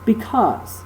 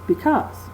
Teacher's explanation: so an I Amic foot or an Amic pattern is where an unaccented syllable is followed by an accented syllable